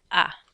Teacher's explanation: a is pronounced ah like you're at the doctor's office ah but it's nice and short